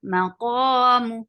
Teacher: Qa is 2 counts long. It is heavy